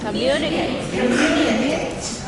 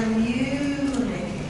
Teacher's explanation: we stress the second syllable there, and we're making it longer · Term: stressed syllable